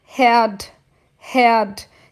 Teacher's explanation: Então, esse H vai ter som de ré. Esse R no final da sílaba eu quase não falo, eu não preciso forçar ele a falar herd.